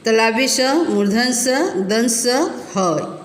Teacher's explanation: इनका उच्चारण करते समय वायु मुख से टकराकर ऊष्म अर्थात गर्मी उत्पन्न करती है, इसलिए ये ऊष्म व्यंजन कहलाते हैं।